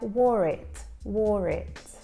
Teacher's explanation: that final sound, that R sound links to it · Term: linking